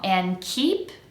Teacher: going to transition quickly to an and and keep and make that e nice and long and keep I have to release the air to make the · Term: long e